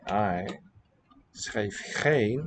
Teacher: So we saw it with a voiced fricative in the plural, schrijven. Here the fricative is final, that labial sound, and it is devoiced in sound and spelling.